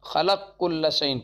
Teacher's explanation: قاف کا کاف میں ادغام کرتے ہیں · سوسی کے یہاں قاف کا کاف میں ادغام کبیر کامل ہی ہوا ہے، ناقص ہوتا ہی نہیں